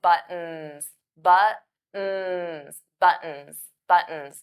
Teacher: So those T's become flat T's. We don't push out the air.